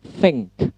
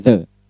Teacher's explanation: Kalau tha kan masuk ke voiceless atau unvoiced consonant. Kalau yang the masuk ke dalam voice consonant.